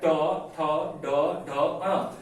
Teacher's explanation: टवर्ग जो हो जाएगा वो मूर्धा से उच्चारित हो रहा है